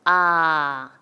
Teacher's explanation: 땐 알을 한번 길게 발음해 보면 아 인 모양이 변하지 않고 소리가 일관되고 혀의 위치도 변하지 않습니다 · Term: 단모음